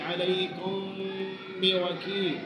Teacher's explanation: میم ساکن کے بعد با آ جانے کی صورت میں میم ساکن کو اس کے مخرج میں چھپا کر ادا کرنا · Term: اخفاء شفوی